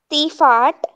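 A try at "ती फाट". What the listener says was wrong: Yes.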